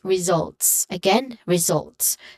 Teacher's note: So the second syllable, it starts with a buzzing sound.